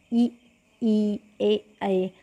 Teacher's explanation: जिनके उच्चारण में जीभ का जो है अग्रभाग, यानी कि आगे का जो भाग होता है, फ्रंट का जो पार्ट होता है, वह काम करता है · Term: अग्रस्वर